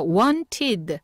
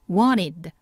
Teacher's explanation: 주변에 n이 있다 보니까 t가 쏙 사라집니다 그래서 원티드 하셔도 되지만 t가 사라지는 그 경향에 따라서 원이드 이렇게